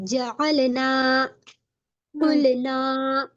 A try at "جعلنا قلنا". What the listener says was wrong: نہیں ناک میں بھی نہیں جائے گا، ناک میں جا رہا ہے.